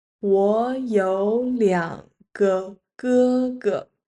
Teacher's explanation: both 我 (wǒ I) and 有 (yǒu have) turn into the second tones here because they are both third tones followed by third tones